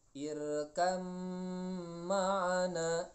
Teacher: Nah, misalkan ada huruf ba dengan mim, maka ini masuknya idgham, maka ba-nya ini tidak dibaca tapi dimasukkan ke huruf mim. Ada dalam surat Hud ayat 42, irkam ma'ana, itu nulisnya irkab ma'ana.